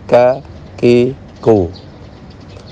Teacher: Berikutnya makhraj kaf. Ya, pangkal tenggorokan agak maju sedikit. Kerjanya dengan langit-langit yang di atasnya.